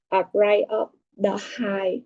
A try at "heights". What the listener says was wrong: Now, remember, for noun, we must pronounce the ending sound. Height. I'm afraid of heights.